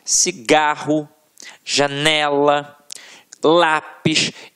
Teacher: a sílaba tônica está na penúltima sílaba · a sílaba que a gente proferiu com mais força sempre esteve na penúltima sílaba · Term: paroxítonas